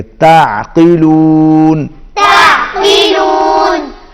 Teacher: عین حروف حلقی میں سے ہے، عین حلق میں سے ادا کریں گے اور قاف کو موٹا پڑھیں گے